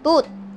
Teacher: ang dila natin ay unang tumatama sa loob ng ating incisors para ma-produce ang tea sound Pagkatapos ay pumapasok ito sa pagitan naman ng ating upper at